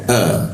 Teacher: Hamzah posisinya di tenggorokan bagian bawah.